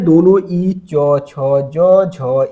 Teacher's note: च वर्ग का उच्चारण तो तालव्य से होता है